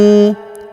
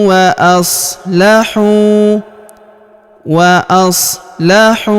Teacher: huruf hu kita panjangkan dua harokat karena waw sukun di depannya, alifnya tidak dibaca.